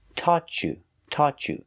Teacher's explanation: when you link the words taught you you hear the ch sound